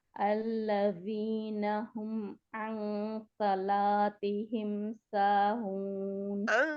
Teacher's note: बहुत बारीक है आइन, अच्छा और उसको बारीकी के साथ ही नून की आवाज वो जो है ना नाक में चली जाती है ना, फिर नून जज़म वाले की आवाज नाक से डाइवर्ट होके नाक की तरफ जाके बाहर आती है